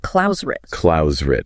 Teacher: it's almost like there's a gentle R bridging those words instead of a hard T. So it's almost like Klausrit.